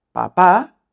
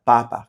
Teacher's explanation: una es papá con la última abierta y la otra es papá con las dos abiertas. Y es porque esa armonía vocálica de la que estaba hablando antes, lo que le pasa a la última vocal tiene que pasar a todas las otras vocales hasta llegar al acento.